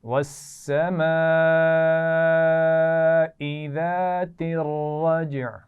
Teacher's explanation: वस्समाई कई दफ़ा पढ़ चुके हैं, बड़ी मद है, खूब खींच कर पढ़ा जाएगा